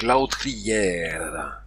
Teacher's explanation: autour de de l'ambou le r final se prononce donc lautère le R est toujours roulé malheureusement je ne sais pas le faire j'utilise un r battu à la place